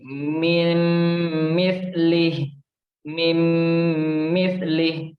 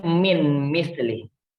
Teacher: Tidak boleh min mislih. Harus kita masukkan nunnya ke huruf mim dan kita dengungkan. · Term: idgham bi gunnah